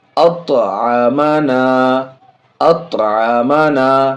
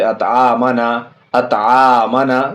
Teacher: इन बीच वाले दोनों में ज़बर है, ज़बर जल्दी पढ़ेंगे, थोड़ा भी नहीं खींचेंगे।